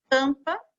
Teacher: Durante a leitura em voz alta, observe que ao pronunciar as letras em destaque, né, que são as letras M e N, o som sai um pouquinho pela boca e um pouquinho pelo nariz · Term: som nasal